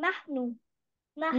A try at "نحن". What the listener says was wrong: نحن، برافو عليك.